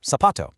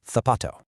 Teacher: In Latin America, the word for shoe, zapato, is pronounced with an S sound, so zapato. But in most of Spain, it has more of a TH sound